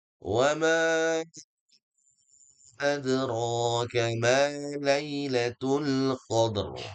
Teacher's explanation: ada ma yang panjang, kemudian dalnya ada qalqalah sughra dipantulkan